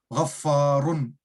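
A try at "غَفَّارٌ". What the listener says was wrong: फा को क्यों खींच रहे हैं आप? रा को क्यों, रुन क्यों कर रहे हैं? तनवीन।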